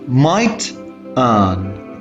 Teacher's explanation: Another factor that helps us deciding the juncture is that I is shorter in might.